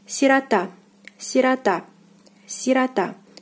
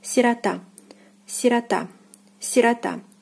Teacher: The stress is on the last syllable, and O is again unstressed and is pronounced as A.